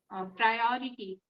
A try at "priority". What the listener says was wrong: Some people say priority, but the right pronunciation is what you said.